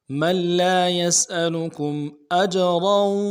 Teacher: کم میں میم ساکن ہے اظہار کے ساتھ پڑھیں گے کیونکہ حروف حلقی میں سے آ رہا ہے